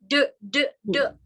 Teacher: That's called shwa sound. You're not supposed to add uh you're supposed to just say it even without moving the lips.